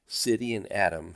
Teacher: in American English we often pronounce the t's as D's or more precisely as Taps